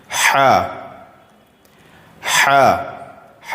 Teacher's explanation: जी हा ये बीच हलक से अदा होगा। हलक यानी जो हमारे गले का हिस्सा है उसके बीच से ह अदा होगा